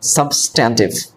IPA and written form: ˈsʌbstəntɪv (Substantive)